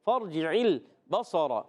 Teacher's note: عین ادا ہوتا ہے حلق کے درمیان والے حصے سے